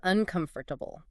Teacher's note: keeping all five syllables clear. That's more the standard American pronunciation, the one you might hear in more careful or, say, formal speech.